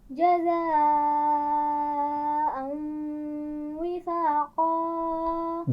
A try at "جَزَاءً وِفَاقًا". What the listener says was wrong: زا کے مخرج کا خیال رکھیے، جزاء، پھر پڑھیے۔